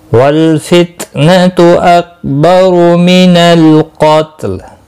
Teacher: قاف مستعلیہ ہے، پر پڑا جائے گا، وقف کی صورت میں لام ساکن پڑا جائے گا